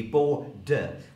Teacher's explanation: in my accent it would be bo-de. We don't have syllabic consonants.